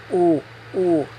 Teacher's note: Your tongue is all the way in the back of your mouth.